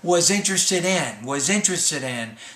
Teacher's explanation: I say was interested in. So I don't really pause between interested and in. I put those together almost as the same word. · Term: blending